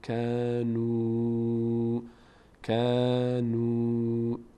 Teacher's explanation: واو اینجا مدکشیم این الف تلفظ نمیشه